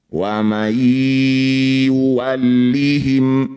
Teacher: Wa may yuwallihim, nun sukun bertemu ya, disebut bacaan namanya idgham bi gunnah. Bunyi nun masuk pada ya, dengungkan 2 harokat.